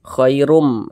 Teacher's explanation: melebur masuk ke huruf mim bunyi tanwinnya kemudian kita dengungkan jadi suaranya itu kita tahan kita panjangkan sejenakirum di sini ada huruf nun sukun bertemu dengan huruf Shad